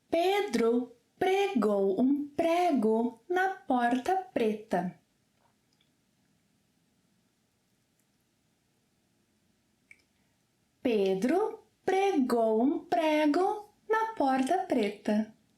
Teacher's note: Yes, the R sound, the one in which your tongue should simply tap the roof of your mouth.